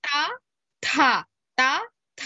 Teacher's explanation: the first letter is ಅಲ್ಪಪ್ರಾಣ ವೇರ್ as the second letter is ಮಹಾಪ್ರಾಣ